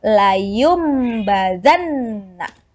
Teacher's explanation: di sini ada nun mati setelah huruf nun ada huruf ba Jadi huruf nunnya berubah menjadi mim maka hukum bacaannya adalah iqlab layumbadanna selanjutnya Quran surah Annisa ayat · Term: iklab